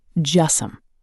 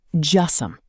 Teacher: Just some almost becomes one word. Just some. Almost no gap between them.